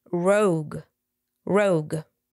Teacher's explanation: we have the rounded o vowel sound and the final voiced G